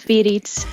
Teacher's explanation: You can probably hear my tapped R